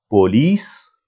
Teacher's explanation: P is not aspirated. Second letter wow is pronounced as O, and L, E, S.